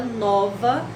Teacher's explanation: pronunciando a palavra nova, a sílaba mais forte é nó.